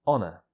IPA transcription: ˈɒnə